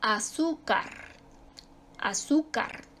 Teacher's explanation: Su sílaba tónica está en la penúltima. Termina en una que no es ni N ni S.